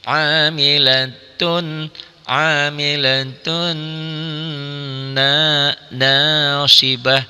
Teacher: ada guna gunahnya ada dengungnya ya sama seperti nun dan mim bertasid kan gunah juga · Idgham melebur masuk dari bunyi tanwin n-nya, amilatun kan n. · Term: idgham bigunah, idgham bi gunnah